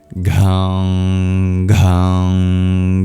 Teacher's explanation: now it's time for g, the aspirated g